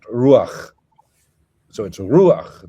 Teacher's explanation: Jerome and the Hexapla of Oregon, and all of a sudden in Masoretic Hebrew, you've got the chet and what have you is pronounced, but then you have the patach furtivum, which is an unaccented epenthetic vowel